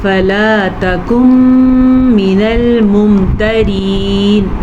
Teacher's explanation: را ہم نے باریک پڑھی ہے کیونکہ را کے نیچے زیر ہے